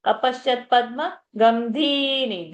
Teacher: Dhi is long, ni is short. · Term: Rasva Dirgha